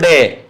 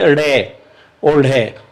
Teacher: 2 बार स्पर्श होता है, एक बार ऊपर और एक बार नीचे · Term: उत्क्षिप्त ध्वनियां